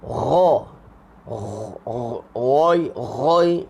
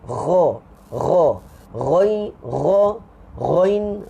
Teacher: Ha tengah-tengah. Ghain dia naik atas sikit daripada ha.